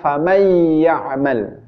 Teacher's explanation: Nunnya tidak terlihat ketika diucapkan. · Maka bacanya adalah faman ya'mal. Nun sukun dimasukkan ke huruf ya. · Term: idgham